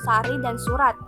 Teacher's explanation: bunyi frikatif geseran apikodental atau laminoalveolar yang tak bersuara